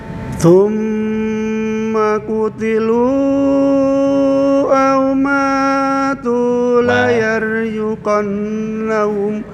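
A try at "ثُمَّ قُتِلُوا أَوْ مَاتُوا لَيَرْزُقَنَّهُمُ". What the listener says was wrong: Oke, matu ma hanya 2 harokat. Au matu la yarzuqannahum.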